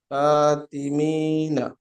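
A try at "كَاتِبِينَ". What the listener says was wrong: মি হয়ে যাচ্ছে বিনা।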